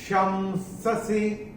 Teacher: अनुस्वार के बाद जब स आता है तो अनुस्वार का उच्चारण होता है म